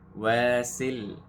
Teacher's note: the waw has a alif mad, so we stretch for 2 seconds